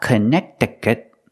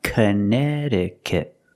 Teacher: the second C is silent and the T after that c is pronounced with a fast D sound